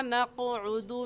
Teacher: نَقْعُدُ میں عین کو نکال کر پڑھیں گے